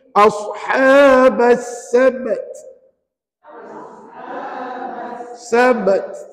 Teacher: Tapi jangan lupa lepas bunyi qalqalah pada ba, puan-puan kena bunyikan ta. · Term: kol-kolah sugra